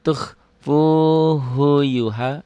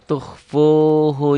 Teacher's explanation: Tapi hu-nya pendek ya. Jangan dibaca panjang.